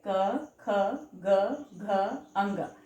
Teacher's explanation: इनका उच्चारण कंठ से होता है। इन्हें कंठव्य वर्ण भी कहा जाता है। कंठ यानी थ्रोट।